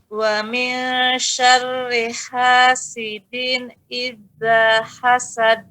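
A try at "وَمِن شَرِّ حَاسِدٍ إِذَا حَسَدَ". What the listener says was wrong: Masih kandas. Idza, za. Coba Bu, za. Dia terlihat ada getaran kecil dia. Ya sedikit saja. Jangan terlalu tekan. Menyentuh dengan lemah.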